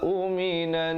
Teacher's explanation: Jadi lusufaha uminan, di situ nun sabdu didengungkan 2 harakat, wajibul gunnah